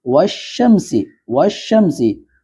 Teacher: واو کو ڈائریکٹ شین سے جوڑ رہے ہیں، بیچ میں الف ہے لام ہے لیکن ان کو چھوڑ کر ڈائریکٹ واو کو شین سے جوڑیں گے